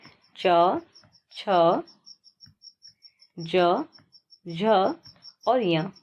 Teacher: इन पांचों का उच्चारण तालु की मदद से होता है। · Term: च वर्ग